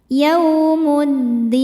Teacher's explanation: Sebab alif lam menghadapi huruf syamsiyah yaitu dal. Dibaca alif lamnya ee dilewatin ya, enggak dibaca ya. Masuk langsung ke dal. Yaumuddin. Saat berhenti hukumnya mad arid lukun. · Dibaca alif lamnya dilewatin ya, nggak dibaca ya. Masuk langsung ke dal. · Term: alif lam syamsiyah